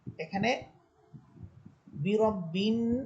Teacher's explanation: এখানে বি রব বিন, নুন হরফে গুন্না হবে।